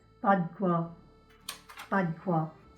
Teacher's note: we're going to drop that mute E because there's only 1 consonant in front